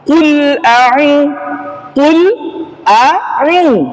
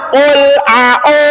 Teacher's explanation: tidak ada namanya vokal O ya yang ada u Ul u ya bukan au ya bukan aah itu kesalahan kita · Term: vokal u